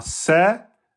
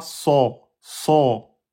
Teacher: Donc le sin et le zeille, ils ont le même point de sortie. Qu'est-ce qui différencie avec le sad ? Et ben le sad on va gonfler l'arrière et ça sera une lettre emphatique.